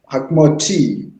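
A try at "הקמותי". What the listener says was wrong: Give the second syllable its due. Ha-ki-moti.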